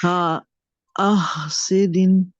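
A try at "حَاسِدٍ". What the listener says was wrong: ये देखिए, आप जब आह कहा है तो आवाज बाहर आई है, आवाज भी बाहर आई है। नो कहे हासिदिन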